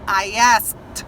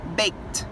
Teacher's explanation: o passado, a pronúncia, ele tem o ED, mas eu não falo como ED, eu falo como se fosse um T.